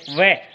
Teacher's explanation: इसके अलावा दांत और ओष्ठ, दंत और ओष्ठ, दांत और होठ के दोनों के माध्यम से जैसे आप वह बोलें वह, तो यहाँ दांत स्पर्श होगा तो वह जो है वह वर्ण वो दंतोष्ठ का है।